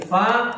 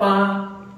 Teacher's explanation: fa ini seringkali dibaca mirip dengan P karena tadi itu anginnya kurang, jadi dibacanya pa.